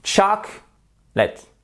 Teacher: le A se prononce comme un E atténué, mais le O ne se prononce pas. Et là, vous avez une voyelle longue.